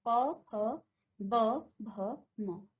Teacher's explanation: अब देखिए आपका जो जीभ है वो कुछ काम नहीं कर रही है, जीभ कुछ नहीं कर रही है अभी। अभी आपके होठों से, आपके होठों से जो है इसका उच्चारण हो रहा है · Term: ओष्ठ